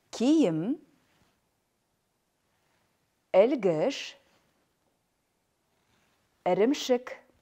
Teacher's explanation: Мягкий гласный, переднеязычный, сверхкраткий. Кончик языка касается нижних зубов. Произносится кратко и нечетко.